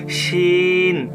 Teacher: জিহ্বার আগা উপরের তালুর সাথে বাতাস বের করে